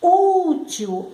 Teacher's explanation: A sílaba que mais se destacou foi u. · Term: paroxítona